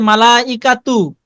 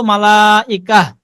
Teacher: হ্যাঁ, এটা বলছিলাম যখন কোন শব্দের শেষে গোলতা থাকবে, আর ওই গোলতা এর উপরে যদি আমরা অক্ফ করি, তখন ওই গোলতা হা হয়ে যায়, তা থাকে না, হা হয়ে যায়। এখন এখানে আছে মালা ইকা তু, যখন আমরা থেমে যাব তখন এই তু বলবো না, বলবো মালা ইকা।